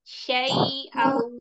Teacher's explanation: Jadi lin itu bunyinya i ya, jelas.